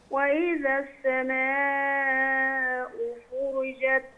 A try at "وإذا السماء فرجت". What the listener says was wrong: لا، ما طولش في الحركة، فرجت.